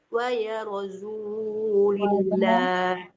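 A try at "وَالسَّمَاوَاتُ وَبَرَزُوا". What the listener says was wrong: Waba bukan waya ya. Was-samawati wa barazu.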